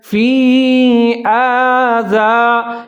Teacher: فی یہاں مد جائز آ رہا ہے تو اس کو آپ نے لمبا پڑھنا ہے ، فی آذا، یہاں زال کا خیال رکھنا ہے، زا نہیں